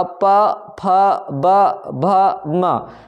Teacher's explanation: जो कि ओष्ठ से निकलते हैं, बिना दोनों ओठ को टच किए आप इसको नहीं बोल सकते हो